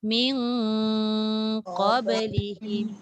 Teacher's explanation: Dengung tu maknanya dah mencapai lah kat hidung. Tapi dia kena tunggu 2 harakat.